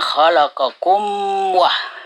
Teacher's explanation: Izhar artinya dibaca terang, itu mimnya, dengan mulut tertutup. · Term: izhar syafawi